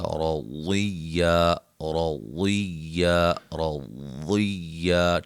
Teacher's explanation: ضاد کو موٹا ادا کریں گے، را کو موٹا ادا کریں گے